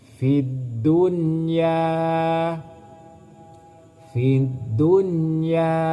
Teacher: Bagaimana cara membaca izhar mutlak? Tidak boleh masuk dengan berdengung. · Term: izhar mutlaq